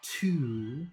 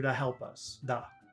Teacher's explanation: So to, in spoken English and conversational English, that very long sound becomes just da.